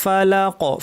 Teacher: কি শেষে একটু বাউন্সের মতো, একটা ধাক্কার মতো, এটি হচ্ছে কলকলা